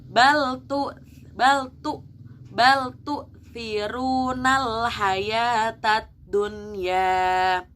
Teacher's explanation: jangan sampai saking ingin fasihnya tu'nya malah dibaca ain jadi tu', padahal dia hanya hamzah. Hati-hati membacanya, harus perlahan, tidak perlu cepat-cepat agar pelafalannya benar ya.